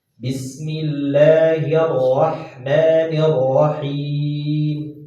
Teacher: Jadi getaran huruf ra itu 1 kali. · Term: takrir